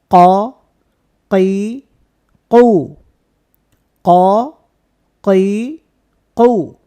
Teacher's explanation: হবে এরকমের কাই কও কই কও হরফটা মোটা একটা হরফ আচ্ছা এই হরফের মধ্যে কোন বাতাস থাকবে না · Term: কফ